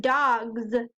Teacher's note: dogs sounds like a z but it's an s